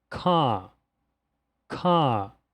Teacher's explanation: Olha só, nessa palavra, a vogal A é seguida pela letra R. No inglês britânico, é como se o R fosse retirado e nós duplicássemos a vogal A. Por isso que ela é chamada de vogal longa, porque ela é pronunciada com uma duração um pouco maior do que daquelas vogais que a gente acabou de ver.